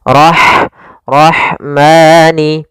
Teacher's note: huruf ha yang memiliki sifat Hamas yaitu harus ada jaranun nafas harus ada mengalirnya nafas kita